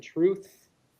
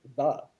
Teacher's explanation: We have two th sounds. We have the th in truth, and then we have the th in the word the, and which is more of a D. And so that mark would be that D with the line through it.